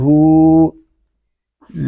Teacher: ہا کو ہم ایک الف تک کھینچ کر پڑھیں گے کیونکہ یہاں الٹا پیش ہے.